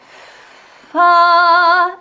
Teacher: If you put your hand on your throat, you do not feel any vibrations on that, right? Because your vocal folds are not vibrating. So it's just fa, and then we're just opening it up to ah.